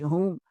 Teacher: ہا حلق کے نیچے والے حصے یعنی سینے والے حصے سے ادا ہوتا ہے